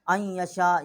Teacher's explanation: یہ 4 الف جتنا آواز جو ہے وہ بلند کیا ہے